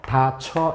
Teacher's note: 단모음 이가 반모음 이로 바뀐 거라는 사실을 알 수 있지.